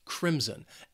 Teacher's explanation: Then we have the color crimson, and this word also has two syllables, and the stress is on that first syllable. That second syllable has a bit of that schwa, that sound.